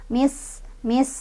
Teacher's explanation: sinnya ini punya sifat sofir, punya sifat hamas. Sofir itu ada desisan, hamas itu ada udara keluar ya, jadi mis, mis gitu ya.